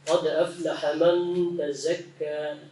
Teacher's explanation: dikasih angin dikit lagi ya. Sehingga jelas perbedaan antara zai dengan dzal. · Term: makharijul huruf zai